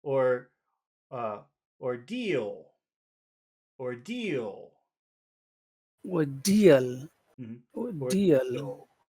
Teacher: well so but this is at the end of a phrase so what you have to do is make it high but then by the time you finish the word it must go down